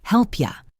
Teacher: The P from help and the Y from you create a sound that's almost like help cha or help ya.